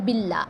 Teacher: اب یہاں پہ دیکھیں اس میں جلالہ کا رول آ گیا نا، یعنی اس میں جلالہ ترقیق، یعنی اللہ کے نام سے پہلے زیر آ گئی تو یہاں پہ اس کو باریک پڑھ رہے ہیں